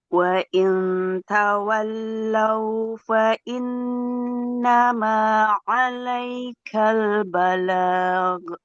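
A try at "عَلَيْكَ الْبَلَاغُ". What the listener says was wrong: Nah, nggak boleh balag. Huruf ghain punya sifat mengalir suara. Alai balag. Balag.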